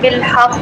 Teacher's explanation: مشدد حرف پر آپ وقف کر رہے ہیں اور وہ حروف کلکلہ ہے، تو کلکلہ بہت زیادہ واضح ہو جائے گا. جو فرسٹ جو ہے لیول پہ آ جائے گا.